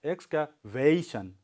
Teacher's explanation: So you have to make your sound bigger, louder for va sound. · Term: stress